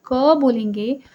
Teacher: अगर आप क बोलेंगे तो उसमें क और अ दोनों आ रहे हैं